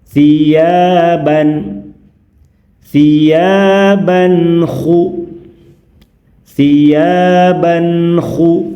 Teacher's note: Tidak mengalami perubahan, tetap terdengar jelas n-nya, tidak cepat dilepas dan tidak ditahan lama, sedang-sedang saja. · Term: tanwin an